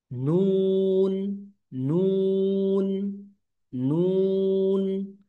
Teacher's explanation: জিহ্বার আগা বরাবর তালুর সাথে লেগে উচ্চারিত হয়।